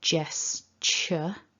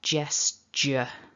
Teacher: i'm fairly certain that when i'm not thinking about it i would very easily voice the second syllable